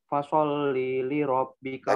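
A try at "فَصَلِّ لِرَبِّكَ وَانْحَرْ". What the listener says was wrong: li-nya pendek.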